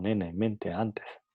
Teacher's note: En cuanto al punto de articulación es alveolar, pues para su producción la punta de la lengua toca la zona alveolar · El fonema N es un fonema nasal, alveolar, sonoro. Entonces es fonema nasal, eso que acabo de explicar cuando hablaba del fonema M, es fonema nasal porque el aire sale de la nariz, ¿no?